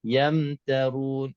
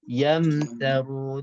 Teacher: Antara ya dengan ta adanya mim mati, iaitu dah kita satu kali kita tutup bibir mulut. Yamtarun terus ke huruf ta.